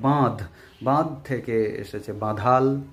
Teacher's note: ল ধ্বনির আগমন ঘটেছে, এটা হলো অন্ত ব্যঞ্জনাগমের দৃষ্টান্ত